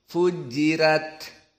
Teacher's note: Roknya meskipun fathah namun sebelumnya kasrah. Maka sakil. Kalau dibaca rok susah. Maka dibaca dengan tarqiq.